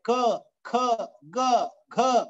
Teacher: ಕಂಠದಿಂದ ಈ ಎಲ್ಲ ಉಚ್ಚಾರಗಳಾಗ್ತವೆ. ಕ ಖ ಗ ಘ ಈ ಎಲ್ಲ ಉಚ್ಚಾರ ಮಾಡಬೇಕಾದ್ರೆ ನಾಲ್ಗೆಯ ಅವಶ್ಯಕತೆ ಇಲ್ಲ, ಕಂಠದ ಅವಶ್ಯಕತೆ ಇದೆ. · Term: ಕಂಠವ್ಯ